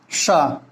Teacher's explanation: जिसको तलबी श कहते हैं, तालव्य श, इसका उच्चारण स्थान तालव्य होता है।